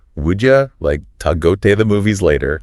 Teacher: would you becomes would ya, to is like ta, and the like disappears before movies